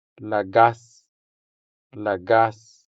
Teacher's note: The stress falls on the second syllable, making the second a sound longer than the first a.